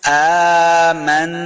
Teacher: حمزہ کے اوپر جو کھڑی زبر ہے اس کو دو حرکات لمبا کرنا ہے